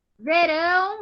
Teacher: a oxítona é a última mais forte. Então, a última sílaba da palavra é a mais forte.